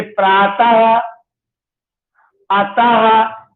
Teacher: जो हमारा विसर्ग है वो जो हमारी वर्णमाला में अह का वर्ण है, इस वर्ण से प्रयोग किया जाता है। वैसे इसका इन बिंदुओं का उच्चारण आधे हा के रूप में होता है